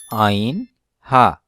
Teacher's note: কণ্ঠনালীর দ্বিতীয় ভাগ হতে উচ্চারণ হয় আইন, হা